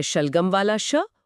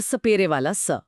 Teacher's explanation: श एक तालव्य ध्वनि है जहां जीभ मुड़कर मुंह की छत को छूती है। जबकि स एक दंतीय ध्वनि है जहां जीभ दांतों के ठीक पीछे आती है।